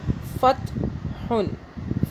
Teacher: فا، تا زبر فت، ہا دو پیش ہن، یہ بنا فت ہن، فت ہن۔ ہا کو حلق سے پڑھیں گے، تا پہ جھٹکا نہیں دیں گے